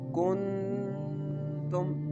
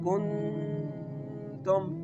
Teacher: The fourth example is >> [music] >> You have to feel when you put your finger on your nose and pronounce this letter like kun tum. During the pronunciation of this word, you can feel the sound is going into your nose. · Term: ikhfa